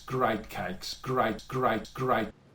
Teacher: It's a diphthong, it's a vowel sound that starts ahh and ends up ee. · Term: face vowel